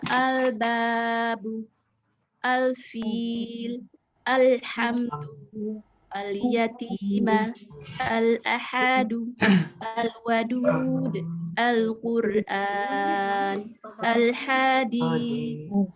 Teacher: Al-qamariyah itu adalah hurufnya setelah alif lam ada huruf alif atau hamzah, ba, jim, ha, kha, ain, gha, fa, qa, ka, mim, waw, ha, ya. Kalau alif lam qamariyah ini lamnya dibaca jelas.